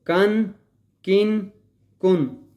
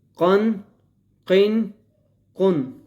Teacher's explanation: قاف الف دو زبر قن، قاف دو زیر قن، قاف دو پیش قن، قن، قن، قن۔ یہ بریک کاف ہے، یہ موٹا کاف ہے، ان دونوں کو ہم نے مکس نہیں کرنا